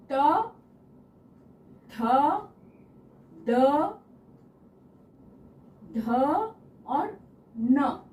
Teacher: त वर्ग जो है वो दांतों के पीछे से, दांतों के पीछे वाले भाग को छूकर ध्वनि आ रही है, इसलिए ट वर्ग दंत उच्चारण स्थान है।